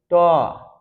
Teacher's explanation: এই ট উচ্চারণ করলে জিভের ডগটা উল্টে গিয়ে মূর্ধাকে স্পর্শ করে। ট ঠ ড ঢ মূর্ধন্য। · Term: মূর্ধন্য বর্ণ